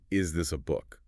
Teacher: The intonation rises at the end of the question.